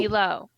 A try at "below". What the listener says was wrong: You said below, but the E was kind of really short.